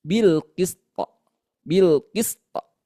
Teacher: Sin punya sifat rakhawah, bunyinya mengalir seperti itu.